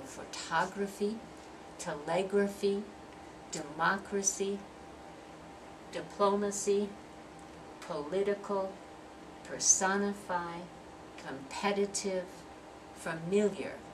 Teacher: photography's four syllables but we're stressing that second syllable